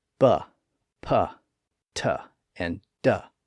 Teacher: by blocking and releasing the air flow in the front part of the mouth